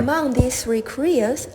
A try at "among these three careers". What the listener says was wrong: you could do a little bit better with your word stress on the word career